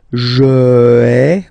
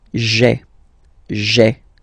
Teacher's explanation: when it comes near another vowel like a, for instance, then it tends to disappear. Okay, so just to avoid pronouncing this je ai, because we think that in French it doesn't sound that beautiful, so we tend to take this away, okay, so that you've got this sound j'ai, j'ai.